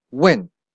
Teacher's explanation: try to pronounce it as the fourth tone